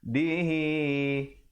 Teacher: Hi itu dibacakan dua harakat. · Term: qasirah